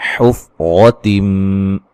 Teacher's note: रा को मोटा अदा करेंगे, नून तनवीन का इदगाम माल गुन्ना है।